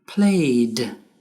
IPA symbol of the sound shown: d